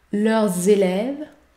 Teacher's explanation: la liaison est obligatoire et vous devez prononcer le son z.